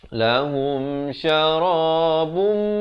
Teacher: Kemudian lahum syarabum, idgham bi gunnah, masuk beserta dengung. Asalnya syarabun, jadi bila datang mim terus masuk. Bum, 2 harakat.